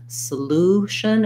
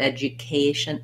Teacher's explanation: Like in solution, it says ooh, but education, there's the yuh sound.